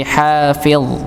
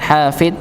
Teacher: ujung lidah bertemu dengan gigi seri atas seperti huruf dzal, tapi bedanya pangkal lidah itu diangkat dikarenakan dia sebagai huruf tebal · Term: huruf dha